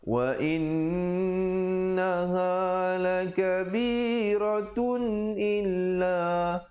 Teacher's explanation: Bunyi pertamanya wa in itu didengungkan 2 harakat, wajibul ghunnah